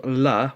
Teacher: you make it with pushing air through the sides of your tongue and through your mouth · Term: lateral liquid